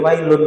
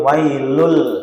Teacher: Ngah karena di sini ada idgam bilang punah wailun sama walakillah gitu humazatil juga sami ini definisinya idgham berarti dia masuk atau lebur bisa masuk bisa lebur ya bila dengan tanpa ghunah dengung berarti dia masuk lebur tanpa ada dengung makanya ketika baca wailun gak boleh wailun wailul karena sudah sudah lebur dia. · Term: idgham bila ghunah